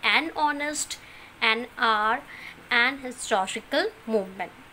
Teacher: So what happened here? H is considered as silent.